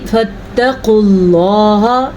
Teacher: لفظ اللہ کو پر پڑھنا ہے کیونکہ لفظ اللہ سے پہلے پیش ہے. اگر لفظ اللہ سے پہلے زیر آ جائے گی تو لفظ اللہ کو باریک پڑھنا ہے، پیش اور زبر کی صورت میں پر پڑھنا ہے.